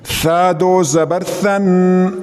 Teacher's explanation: زبان کا سرا کنارہ تھوڑا سا دانتوں سے، سامنے والے دانتوں سے باہر نکالے تھوڑا سا، یہ ثا ہو جائے گا